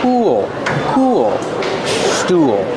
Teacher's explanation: use the ooh sound like cool and pool link to the dark l